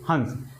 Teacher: देखिए हा कहाँ से कंठ से उच्चारित हो रहा है और अनुस्वार कहाँ से हो रहा है, नाक से। · हंस इसका उच्चारण स्थान कहां से हो जाएगा कंठ और नाक दोनों हंस बोलिए हंस देखिए ह कहां से कं उच्चारित हो रहा